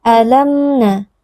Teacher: Mim sukun yang bertemu dengan huruf nun adalah izhar syafawi, wajib dibaca dengan bunyi huruf mim yang jelas dan tanpa dengung yang dipanjangkan.